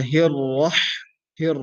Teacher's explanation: her is pronounced from the middle of the throat